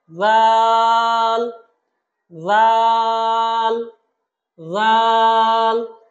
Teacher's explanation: জিহবার আগা উপরের দাঁতের আগার সাথে ঠিক একই ভাবে জাল হরফটা উচ্চারণ করতে হবে